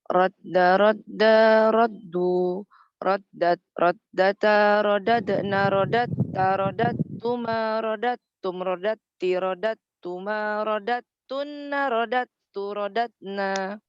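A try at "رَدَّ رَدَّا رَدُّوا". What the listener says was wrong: Ya, bagus ya.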